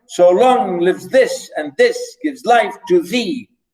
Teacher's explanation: unstressed stress, unstressed stress, unstressed stress